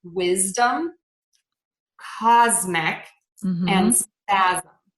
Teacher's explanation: we are going to say a z for the letter s before a voiced sound